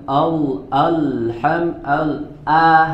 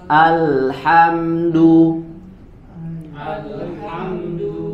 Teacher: huruf hamzahnya harus jelas ya dibaca tipis tidak boleh kita menebalkan huruf hamzah